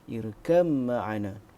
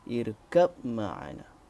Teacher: Al-Jazari ada satu pendapat yang membacanya dengan izhar huruf ba kepada mim apabila wasal. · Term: idgham